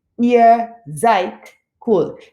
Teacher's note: Even though there's a D at the end, I actually make the T sound. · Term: Auslautverhärtung